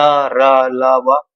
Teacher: जितने भी अंतस्थ व्यंजन है वो सभी के सभी सघोष है क्योंकि इनको बोलने पर स्वर यंत्र कंपित करती है